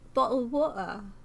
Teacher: The T makes a glottal stop, right?